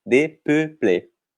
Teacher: A gente tem dois E's com a boquinha mais aberta no final, e no meio a gente tem um E com bico.